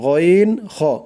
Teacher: কণ্ঠনালীর শেষ হইতে, মানে গলার শেষ ভাগ থেকে উচ্চারিত হয় গইন খ। গইন, এই যে মোটা করে, মোটা করে বলতে হবে গইন খ।